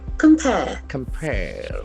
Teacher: So the accent falls on the second syllable.